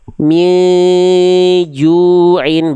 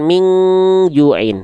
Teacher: Contoh di sini kita baca min juin enggak dibaca eng tapi bersiap-siap saja melafalkan jim